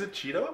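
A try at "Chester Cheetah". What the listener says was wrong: Cheetah. Yeah, you said Cheeto.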